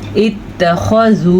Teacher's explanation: یہ مد آپ نے 3 حرکات عربیہ کے برابر لمبی کرنی ہے. تقریباً 2-3 سیکنڈ لگ ہی جاتے ہیں اس کو ادا کرتے ہوئے.